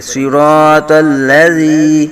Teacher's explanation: زال کو باریک پڑھیں گے، جو ہے وہ نرمی سے پڑھیں گے، سختی نہیں یہاں کریں گے، اگر سختی سیٹی بج گئی تو پھر یہ زا بن جائے گا ، صراط الذی نہیں پڑھیں گے بلکہ ری نرمی سے پڑھیں